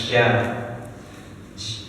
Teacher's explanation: Kalau huruf sya itu lebih tebal. Di anginnya itu sya itu memiliki sifat huruf tafashi. Jadi menyebar, air anginnya menyebar ke seluruh mulut.